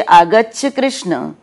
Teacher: कृष्ण का जो अंतिम स्वर है अ उसी को हम लंबा करके बोलते हैं और उस स्वर को हम प्लुत कहते हैं अब इस प्लुत